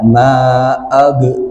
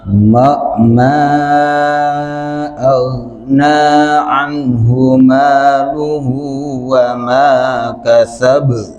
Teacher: Ingat, bukan huruf qalqalah, jadi jangan ada pantulan.